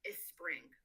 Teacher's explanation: So, a word like spring that has that tri blend of spr is not something found in Arabic. So, students may add a vowel in front of it and pronounce it as a spring.